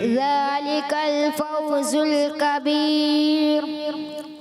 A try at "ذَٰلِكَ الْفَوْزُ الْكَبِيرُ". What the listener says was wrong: کبیر را پر نہیں کریں گے، باریک، ذلك الفوز الكبیر،